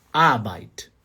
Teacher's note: No alemão padrão, você não precisa puxar o R. Não é Arbeit.